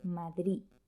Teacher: se pronuncia de forma diferente por ejemplo en la palabra madrid muchos hablantes eliminan la de final y dicen simplemente madrid algunos en lugar de una de pronuncian más bien una t